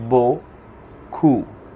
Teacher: Aquí la P del final no suena